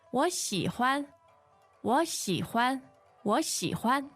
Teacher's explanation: The tones on that 喜 欢 are third and neutral.